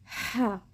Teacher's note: تو بڑی ہاء کو ہم نے درمیان والی حلق سے نکالا